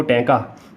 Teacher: ਉਹ ਧੁਨੀਆਂ ਜਿਨ੍ਹਾਂ ਨੂੰ ਆਪਾਂ ਬੋਲਦੇ ਹਾਂ, ਤੁਸੀਂ ਬੋਲ ਕੇ ਵੇਖੋ। ਟੈਂਕਾ, ਤੁਹਾਡੀ ਜੀਭ ਗੋਲ ਹੋ ਜਾਣੀ, ਤਾਂ ਨੂੰ ਮੁੜ ਜਾਣੀ, ਉਲਟ ਹੋ ਜਾਣੀ, ਉਲਟ ਜਾਣੀ, ਤਾਂ ਕਰਕੇ ਇਹ ਟੈਂਕੇ ਵਾਲੇ ਟਵਰਗ ਨੂੰ ਮੂਰ ਧੁਨੀ ਜਾਂ ਉਲਟ ਜੀਬੀ ਧੁਨੀਆਂ ਕਿਹਾ ਜਾਂਦਾ ਆ।